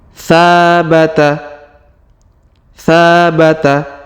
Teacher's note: huruf tsa kita panjangkan dua harakat karena di depannya terdapat Alif